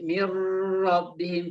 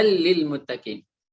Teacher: hudallilmuttaqin tidak boleh hudal Laili Muttaqien tapi langsung udah lilmutaqin karena kita memasukkan nun sukun atau tanwin nya ke huruf setelahnya tanpa ada dengung